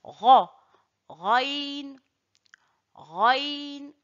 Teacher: Le raïn sort de l'entrée de la gorge et c'est une lettre emphatique. Je dis ra, raïn, raïn.